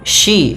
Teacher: jangan sia, tapi dia huruf shin, yaitu dari tengah lidah kita